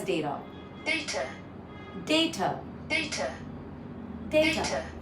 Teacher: in the UK way, it's basically the t is more pronounced